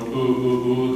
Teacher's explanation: English has a very particular oo sound. It's a little more in the lips, it's a little more ooh, ooh, ooh.